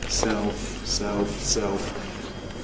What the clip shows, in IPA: seof